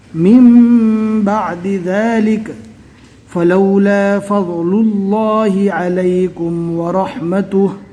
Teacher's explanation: اللہ کے لام کو پور پڑھیں گے · نون ساکن کے بعد اقلاب کا ایک حرف با آیا تو نون ساکن کو میم سے بدل کر پڑھیں گے